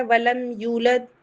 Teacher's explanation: اس کے بعد آ رہا ہے ولم یولد، سیم قاعدہ ہے، میم ساکن کے بعد یا آ رہا ہے تو اظہار شفوی ہوگا، یولد میں واو مدہ ہے، 2 کاؤنٹ پڑھا جائے گا، اور دال پہ کبرا ہوگا، قلقلہ کبرا۔